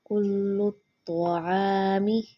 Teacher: عین کی آواز حلق سے نکالیں گے۔ کل الطعام کانا نہیں پڑھیں گے، اکثر اسٹوڈنٹ کیا کرتے ہیں کانا کھینچ دیتے ہیں، نون زبانہ بالکل بھی نہیں کھینچیں گے کیونکہ یہ حرکات ہے۔